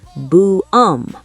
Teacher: It sounds like the English word 'boom', but you drag the vowel out a bit.